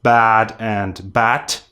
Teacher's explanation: First, let me remind you once again that if a Russian word ends in one of these letters, voiced consonants, you should pronounce not them, but their voiceless counterparts. Therefore, in Russian, English words like bad and bat would sound exactly the same as bat with T